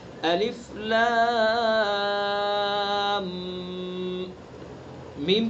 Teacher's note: اچھا، لام میم، لام کو ملاتے ہوئے میم کے چونکہ پر مشدد ہو گیا تو میم کے اندر غنہ بھی کریں گے، الف لام، میم کے اندر رکیں گے 1 الف کے برابر، چونکہ میم مشدد ہے تو اس کے اندر غنہ بھی کریں گے